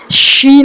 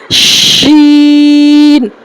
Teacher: ज़बान का जो बीच वाला हिस्सा है, ऊपर का तालु बीच वाले हिस्से में हमको लगाना है। जैसे शीन शीन शीन। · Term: बड़ी शीन